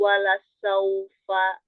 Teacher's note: ee bibir bawah bagian dalam bertemu dengan gigi seri atas Ya, ujung dua gis di atas. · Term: huruf fa